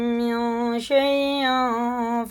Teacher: یہ نون ساکن کے بعد شین ہے اور تنوین کے بعد فا ہے، اگر تنوین یا نون ساکن کے بعد حرف اخفا آ جائے تو غنہ کر کے پڑھنا ہے۔ نون کو ایک الف کے برابر ناک میں چھپا کر پڑھنا ہے